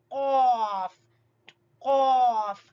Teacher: اس کے بعد زبان کی جڑ سے تھوڑا سا پیچھے منہ کی جانب، وہاں سے ادا ہوگا کیف کیف. قاف کیف، یہ دونوں زبان کی جڑ اور تالو کے ملنے سے قاف کیف ادا ہوتے ہیں